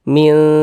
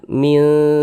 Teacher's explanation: Mil didengungkan, jadi suaranya itu kita tahan, kita panjangkan sejenak. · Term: ikhfa hakiki